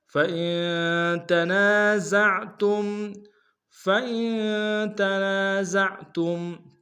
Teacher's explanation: فَإِن میں حمزہ کو نون کے سامنے لائیں گے، نون ساکن غنہ کریں گے، تنا میں نون سالف مدہ کے انداز میں کھینچیں گے، زا کو عین کے سامنے لائیں گے، تا کو میم کے سامنے لائیں گے، میم ساکن غنہ کریں گے۔